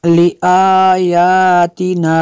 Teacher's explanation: کھڑا زبر کو بھی اتنا ہی کھینچنا ہے جتنا حروف مدہ کو کھینچا جائے گا